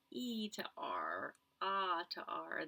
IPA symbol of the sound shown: ɹ